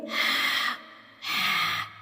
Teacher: ہا حلق کے درمیانی حصے سے ادا ہوتا ہے